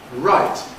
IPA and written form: raɪt (right)